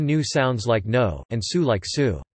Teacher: /j/ is dropped after sonorants and fricatives